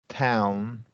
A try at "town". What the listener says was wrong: a little bit wider a little bit wider with that one